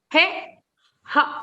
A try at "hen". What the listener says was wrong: Not hay, not hay. And a and hen. Ha, a, hen. Ha, a, hen.